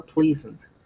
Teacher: ¿dónde va el estrés en pleasant? En la primera sílaba